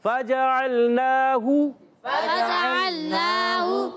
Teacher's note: یعنی فا کو نہیں کھینچا، جیم کو نہیں کھینچا، عین کو نہیں کھینچا، پھر ہا کو نہیں کھینچا